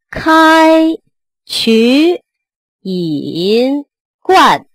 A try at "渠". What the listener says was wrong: 哎 呀 ， 不 经 夸 啊 ， 这 个 渠 又 最 后 憋 住 了 。 渠 不 是 渠 。 开 渠 引 灌 。